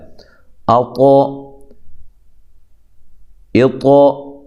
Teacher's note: حمزہ زبر طا، اطا، حروف قلقلہ بھی ہے اور موٹا حرف بھی ہے، ٹھیک ہے؟ ہلا کر بھی پڑھنا ہے اور موٹا بھی اس کو کرنا ہے۔